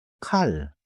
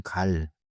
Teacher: If you put your hand near your mouth, you can feel more air than 갈. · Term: aspirated sound